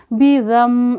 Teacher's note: ज़ाल पे देखें ज़बान को थोड़ा सा बाहर निकालेंगे, ज़ा नहीं पढ़ेंगे।